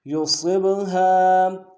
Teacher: فَإِن لَّمْ يُصِبْهَا یا کو نون سے ادا کریں گے، صاد کو با کے ساتھ ملانا ہے، صاد کو موٹا ادا کرتے ہوئے با حروف قلقلہ میں سے قلقلہ کریں گے. یصب ہا کے ساتھ الف مدہ ہے، نرمی سے ادا کرتے ہوئے ہا کو ایک الف دار میں کھینچیں گے.